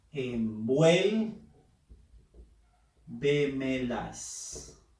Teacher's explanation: En este caso, la fuerza de voz o acento está en la sílaba vuel. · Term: sobre esdrújula